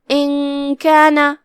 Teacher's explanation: کاف حروف الاخفاء میں سے ہے لہذا ہم نون کو بغیر ظاہر کیے ہوئے لیکن غنہ کے ساتھ یہ حکم کو ادا کریں گے